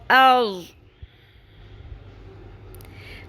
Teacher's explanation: دال کی آواز نہیں آنی چاہیے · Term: ضاد